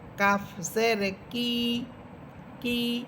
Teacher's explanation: কাফ, জিহ্বার গোড়া থেকে একটু উপরের দিকে উঠে উপরে তালুর সাথে লাগবে